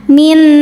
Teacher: Karena nun sukun bertemu nun berharakat. Cara bacanya nun pertama dileburkan ke nun kedua disertai bunyi dengung. Jadi bunyinya m yang ditahan min. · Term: idgham bighunah, idgham bi gunnah